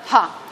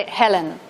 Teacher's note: Por tanto, está invocando la energía femenina y la primera cuestión desde el punto de vista articulatorio es que esta aspirada inicial no es ja, es una aspirada ha, similar a la inglesa, por ejemplo, de Helen